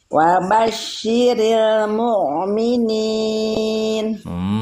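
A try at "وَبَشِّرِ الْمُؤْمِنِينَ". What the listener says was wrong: Jangan mu, tapi mu hamzah. Wa basyiril mu'minin. Wa basyiril mu'minin.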